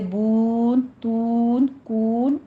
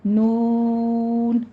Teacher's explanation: نون پڑھتے وقت دھیان رکھنا ہے، ناک میں آواز نہیں جانی چاہیے